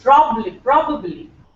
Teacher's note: the stress is on Pro